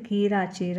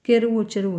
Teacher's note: క అనేది చ గా మారితే అది మనకు తాలవ్యకరణము